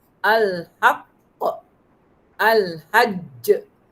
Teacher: Bila huruf qalqalah tu bersabdu. Tak kira baris apa, asalkan dia bersabdu. Paling kuat lantunannya. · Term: Qalqalah akbar